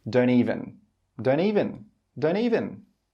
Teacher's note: the speaker joins the don't and the even together. He says don't even, don't even, don't even.